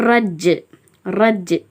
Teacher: ஜீம் கல்கலாவின் எழுத்து அதனால கொஞ்சம் கல்கலா செஞ்சு